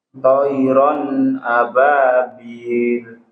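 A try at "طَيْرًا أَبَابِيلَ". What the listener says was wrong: huruf po ditebalkan lagi, Pak. Po. Poi. Poi. Poi. Nah, bersuara i. Poi.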